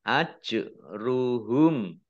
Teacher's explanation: bacaan Qalqalah huruf qolqolah dibaca memantul